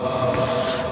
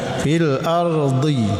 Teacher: Kemudian fil ardhi ini hati-hati membaca di ya dhad. Ini makhrajul hurufnya di lidah di tepi lidah ya. Di bagian pangkal sampai ke tengah. Ketika dibaca tepi lidah digerakkan menyentuh atau menekan gigi geraham.